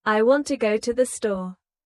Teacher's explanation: The stress is on want and store. The words to and the are much softer. This creates the rhythm of English. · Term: rhythm and stress